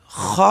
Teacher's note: خا جو ہے یہ ادنی حلق سے یعنی گلے کے اوپر والے حصے سے خا ادا ہوتی ہے